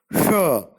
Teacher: Sha is a voiceless palato-alveolar fricative.